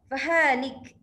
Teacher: Kita selalu matikannya akhirlah ya. Fahalik, lik itu ada sifat hamas ataupun anginnya itu sedikit ya